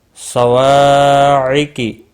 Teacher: صواعقی، وا الف مدہ ہے، 1 الف کے برابر کھینچ کر پڑھنا ہے۔ قاف اور صاد مستعلیہ ہیں، دونوں کو پور پڑھا جائے گا۔ رل، را پور پڑھا جائے گا زبر کی وجہ سے۔